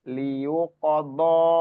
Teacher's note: Do ini panjangnya 4 sampai 5 harokat karena bertemu hamzah. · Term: Mat jaiz munfasil